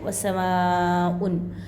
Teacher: मद्दे के बाद है ना हमज़ा उसी कलमे में, तो मद्दे मुत्तसिल इसको 3 या 5 अलिफ की मक़दार खींच कर पढ़ना है